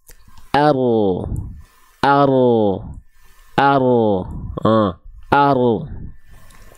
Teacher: huruf ro itu bukan betul-betul dilafalkan dari ujungnya ya tapi dari bagian punggungnya